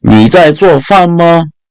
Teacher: So, if you want that to become a question, all you have to do is add the ma at the end. Again, ma here is a neutral tone because there's no tone